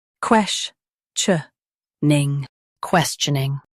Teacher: Stress the ques part and keep tioning light.